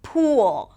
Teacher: Pool longer. The tongue is higher.